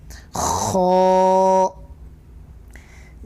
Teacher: حلق کے اوپر والے حصے سے خو ادا ہوتا ہے